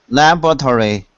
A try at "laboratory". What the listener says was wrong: It looks like laboratory, but we don't say it like that. We say laboratory. Labra. So you don't say the O. It's take out the O. Labra. Labra.